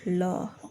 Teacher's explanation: पासविक व्यंजन पार्श्विक व्यंजन जिन व्यंजन के उच्चारण में जीभ स्वास श स्वास वायु से मार्ग से खड़ी हो जाती और शस स्वास वायु उसके बगल से प्रवाह हो जाती है